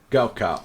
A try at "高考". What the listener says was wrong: Yeah, 高傲. to put the A a little bit backwards.